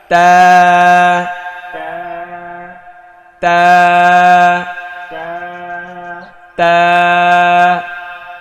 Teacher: মাখরাজ হচ্ছে জিব্বার আগা সামনের ওপরের দুই দাঁতের গোড়ায় লাগিয়ে